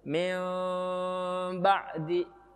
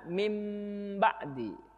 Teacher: Jadi harus antara mim dengan ba. Kalau mim itu mingkem, kalau ba terbuka. Jadi ketika mengucapkan iklab ini tidak boleh terlalu rapat, harus agak terbuka.